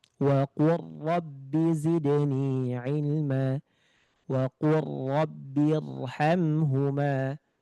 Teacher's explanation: Nah, ini dibaca dengan langsung melebur ke huruf ro. Tanpa ada bunyi lam yang tertinggal. Langsung pure ke huruf ro.